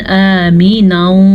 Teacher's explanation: हमज़ा के ऊपर खड़ी ज़बर है तो इसकी मिकदार का ध्यान रखना है, जबकि मीम के नीचे ज़ेर है, इसको खींच के नहीं पढ़ना।